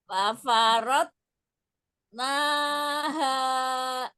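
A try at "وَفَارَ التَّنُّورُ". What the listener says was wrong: Nah, enggak. wawunya dimulai dengan monyong dulu. Wa, coba. Bukan fa itu. Wafa.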